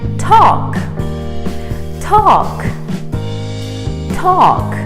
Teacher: The L is silent and the A is pronounced as an O, just like in the word walk.